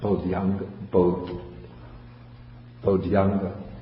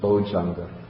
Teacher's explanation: And so the dhya turns into ja, so it becomes bojjhanga.